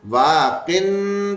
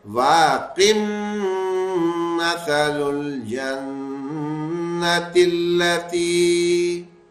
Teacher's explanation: یہاں پہ واقن پڑھنے کے بجائے واقم مثل الجنت التی ایسے کر کے پڑھیں گے